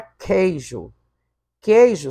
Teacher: queijo só tem ditongo, não tem tritongo, porque o U não está sendo pronunciado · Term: ditongo decrescente